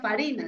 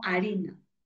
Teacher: La f de latín se dejó de pronunciar, no se decía farina, sino harina.